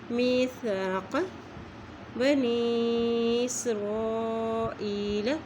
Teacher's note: یا کے پر بھی مد ہے اس لیے اسے لمبا پڑھ رہے ہیں